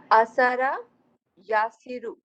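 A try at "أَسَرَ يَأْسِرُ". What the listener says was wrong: اسارا نہیں، یہ حمزہ ہے. या सिरू। ये आप कोई रूल, आप कोई ये रूल ग्रामर का सीख के ये पेश लगा रहे हैं या ये खबर दे रहे हैं? ये क्या है?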